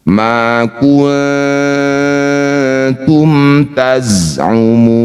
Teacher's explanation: panjangkan enam harakat. Huruf yang terakhir kita sukun. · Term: mad arid bisukun